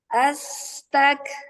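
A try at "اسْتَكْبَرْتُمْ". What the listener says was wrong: Kenapa as? Kenapa as? Hamzah wasalnya dibaca fathah?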